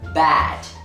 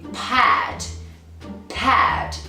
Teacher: in bad there is vibration so it's a voiced consonant sound but in pad pad there is no vibration so it's a voiceless consonant sound